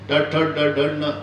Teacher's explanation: बाणाचा न म्हणताना जिभेचा दाताशी संबंधच येत नाही. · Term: मूर्धन्य